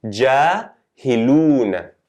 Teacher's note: you need to elongate the dhamma by 2 counts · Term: long vowels